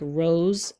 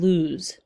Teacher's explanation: different vowel sounds the long o and the oo sound but they have the same consonant sound the s sound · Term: near rhyme